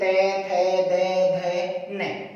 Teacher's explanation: तै वर्ग का जब उच्चारण कर रहे हैं तो हमारी जिह्वा दांतों को स्पर्श कर रही है।